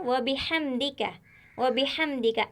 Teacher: व बिहम्दिका, इसमें कोई हर्फ मोटा नहीं है, सब बारीक है। इसमें जो हर्फ है वो 19 हर्फों में से है जो हमेशा बारीक पढ़े जाते हैं।